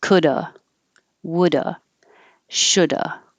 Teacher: you can just drop the v completely and this changes to uh coulda woulda shoulda